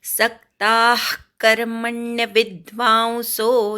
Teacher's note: सक्ताः सवर आघात घ्यायचा, क्ता पूर्ण म्हणून विसर्गाचा अर्धा उच्चार करायचा.